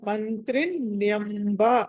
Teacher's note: మా తర్వాత అనుస్వరం ఉంటే అది నగా పలకాలి, తర్వాత త వచ్చింది కాబట్టి